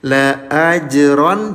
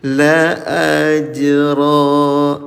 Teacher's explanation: Fatah tain bunyi tanwinnya dirubah jadi panjang ya kalau berhenti. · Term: mad, mad iwad